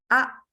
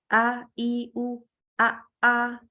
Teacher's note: kalau hamzah itu secara hembusan nafas a langsung berhenti ya, tegas